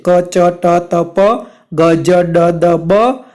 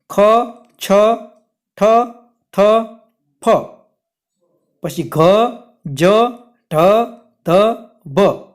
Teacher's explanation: જે વ્યંજનોના ઉચ્ચારણ કરવામાં વધારે હવાની જરૂર પડે તેને મહાપ્રાણ વ્યંજન કહે છે।